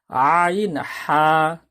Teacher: দুই নম্বর মাখরাজ হলকের মধ্যখানে হইতে আইন হা